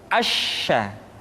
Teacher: Sya dikeluarkan dengan cara mengangkat tengah lidah kita ke langit-langit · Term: huruf sya